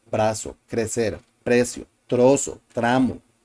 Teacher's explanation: Brazo, crecer, crecer, we have the letter R preceded by the C, crecer, frecuencia, droga, I already said brazo, gracias, trabajo, precio. We have the letter R preceded by a consonant sound, and we use the single tap R sound.